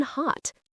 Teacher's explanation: the open O in hot, think ah.